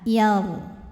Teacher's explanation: Huruf ra sukun dibunyikan secara tafkhim sebab huruf sebelumnya berbaris fathah. Maka kita tebalkan yaru.